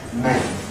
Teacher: the soft palate is going to be down for [ m ], because that’s a nasal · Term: nasalization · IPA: [ mẽn ]